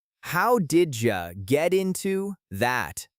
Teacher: For pronunciation, let's look at how did you and get into behave in natural speech. Did you often blends together to sound like didja, and get into links smoothly to sound like jatinto.